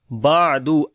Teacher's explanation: عین کو گلے کے درمیان والے حصے سے اور نرم بھی پڑھیں گے کیونکہ توسط ہے اس کے اندر.